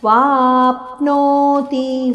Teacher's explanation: ವಾ ದೀರ್ಘ ಅಕ್ಷರ, ಅದರ ಮೇಲೆ ಆಘಾತ ಇದೆ. ವಾಪ್ನೋತಿ, ತಿ ಹ್ರಸ್ವಾಕ್ಷರ, ಚರಣಾಂತ್ಯದಲ್ಲಿ ಹ್ರಸ್ವಾಕ್ಷರ ಇದೆ.